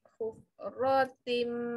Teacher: Masuk bunyi mim lama sikit. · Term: Hukum idgham